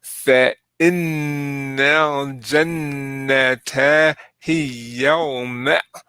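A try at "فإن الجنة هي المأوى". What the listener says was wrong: No, it still sounds like yaw to me. Hiyal ma'wa.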